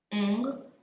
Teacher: You don't hear the g there.